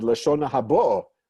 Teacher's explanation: The word is normally accented on the last syllable. In the Ashkenazi world, people would have said Lashona habo, but with a stress on bo, and the vowels shift, vowels different too.